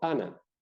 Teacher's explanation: Cuando la A la separo de la nasal, de la consonante nasal, es una vocal oral. Cuando está junta, resulta que la estoy nasalizando.